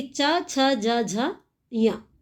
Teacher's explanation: च वर्ग के सभी वर्ण है ना? यानी च, छ, ज, झ, ञ इनका सबका उच्चारण स्थान कहां से होता है? तालु से होता है।